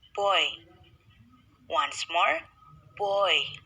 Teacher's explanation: this diphthong is likely more open than o long vowels and glides toward e which is close front position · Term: oy diphthong